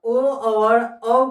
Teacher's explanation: ओ और औ को कंठोष्ठ की सहायता से बोलते हैं।